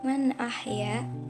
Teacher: Hukum tajwid pada kalimat man ahya, hukumnya izhar sebab huruf nun berharokat sukun bertemu huruf hamzah, dibaca jelas tidak berdengung sama sekali